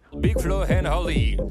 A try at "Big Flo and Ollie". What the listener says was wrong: Au lieu de dire Big Flo and Ollie. On ne prononce pas un H quand il n'y a pas un H.